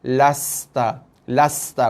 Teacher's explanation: Tak sempat jelas bunyi sofir tu, bunyi desiran pada sin. Sin bila mati dia ada sifat desiran.